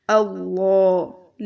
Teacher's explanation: लाम मोटा पढ़ेंगे और खड़ा ज़बर इसको लंबा करेंगे